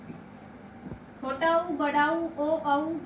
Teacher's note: ये पश्च स्वर कहे जाते हैं, पिछले हिस्से से बोले जाते हैं